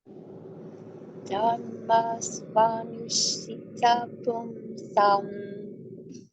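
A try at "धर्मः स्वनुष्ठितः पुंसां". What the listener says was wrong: Very nice, very nice.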